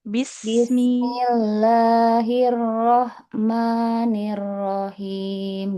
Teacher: Nah jangan dijeda. Jangan jeda sejenak di sin.